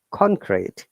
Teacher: When you use as a noun, it is upper intonation to down intonation. So this example for like concrete, con upper intonation and crete is down intonation.